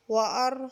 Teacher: واو زبر وا، حمزہ را زبر ار، اس را کو ہم پر کریں گے کیونکہ را ساکن اور اس سے پہلے زبر ہے، اس را کو پر کر کے پڑھیں گے۔